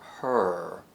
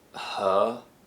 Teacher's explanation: in American English, the tongue is already moving backwards in the mouth to produce the sound, whereas in British English, it's just resting in the middle.